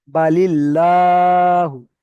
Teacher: দেখেন এখানে ল লেখা রয়েছে, যেমন ইন্নাল্লাহা, ইন্নাল্লাহা, এখানে লাম খাওয়া যাবার ল হয়ে যাচ্ছে। এবং যদি লাম মুসাদ্দাদের পূর্বে যদি জের থাকে তাহলে আল্লাহর লামকে বারিক অর্থাৎ লা পড়তে হবে